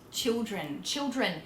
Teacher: We turn our L's into W's.